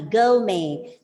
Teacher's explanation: The last T is silent. The stress is on the first syllable and the R is silent.